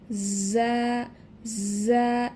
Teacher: লক্ষ্য করি, জিহবার আগা সামনের নিচের 2 দাঁতের পেট ও আগার সাথে লাগাইয়া জা, জা একটু ঝাঁঝালো করে উচ্চারণ করতে হবে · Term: মাখরাজ